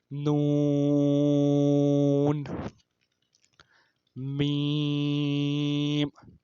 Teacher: یہ ناک کے بانسے سے ادا ہوتے ہیں، یعنی کہ ہم آواز کو ناک میں لے کے جاتے ہیں اور وہاں پہ ہم گنا کرتے ہیں، وہاں پہ آواز کو ٹھہراتے ہیں.